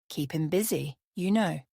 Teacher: the intonation on you know is often flat or slightly falling